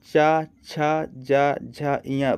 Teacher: च छ ज झ य बोलकर ही समझ में आ रहा है इन सभी का उच्चारण कहां से हो रहा है तालू से हो रहा है